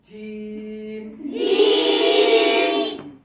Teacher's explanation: জিম কয় number মাখরাজ? 6 number মাখরাজ। জিহ্বার মধ্যখান।